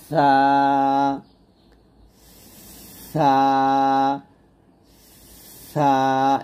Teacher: জিহ্বার আগা সামনের উপরে দুই দাতের আগার সঙ্গে লাগিয়ে ছাটা উচ্চারণ করতে হবে পাতলা করে